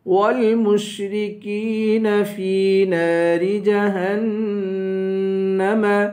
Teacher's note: فی کو ایک الف کے برابر کھینچیں گے